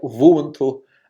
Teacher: bilabial fricative rather than a bilabial approximant